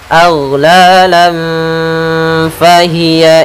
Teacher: Cara membacanya yaitu tanwinnya kita samarkan ke fa. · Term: ikhfa hakiki